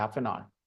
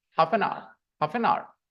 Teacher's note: अंग्रेज 3 वर्ड के तौर पे बोलते नहीं है, लिखते हैं, बोलते एक वर्ड है, हाफ एन आवर।